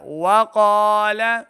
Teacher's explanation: وقال قاف کو موٹا پڑھنا ہے، دو نقطوں والا قاف حروف مستعلیہ سے موٹی آواز کے ساتھ پڑھیں. لام زبر لا، لام کی آواز کو لمبا نہیں کریں گے.